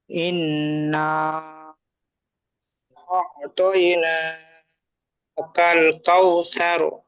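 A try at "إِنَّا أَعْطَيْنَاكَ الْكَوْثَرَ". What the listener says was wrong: মাশাআল্লাহ, খুব সুন্দর পড়েছেন।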